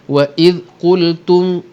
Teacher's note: jangan qalqalah wa iz, tak ada z. Wa iz qultum, okey, mim mati yang ada tanda mati, hukum dia izhar syafawi, tidak dengung.